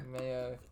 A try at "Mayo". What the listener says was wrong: No, Mayo. It's just an O sound, not yo.